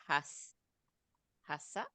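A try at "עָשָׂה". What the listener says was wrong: No, it's just an ayin. So it's asa.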